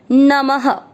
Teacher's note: म में अ मिक्स करेंगे, मने नम, दोनों अक्षर पूरे दोनों में अ मिक्स कर दीजिए। नम, अ की मात्रा है इसलिए विसर्ग को पढ़ेंगे ह